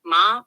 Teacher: first tone flat High tone high and steady like singing one note